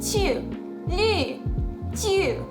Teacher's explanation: it sounds like it's going up and then down in terms of its pitch too, probably because I'm doing it in a fourth tone.